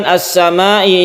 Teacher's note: ini disebut mad wajib muttasil kita panjangkan 5 harokat atau dua setengah Alif